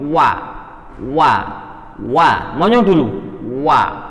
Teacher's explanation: kedua bibir dimonyongkan, yaitu huruf waw